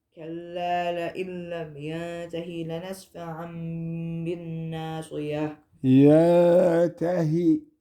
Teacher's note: And don't stretch the ha. It's just ha kasra.